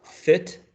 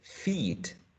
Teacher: the short and lax E, and the long and tense E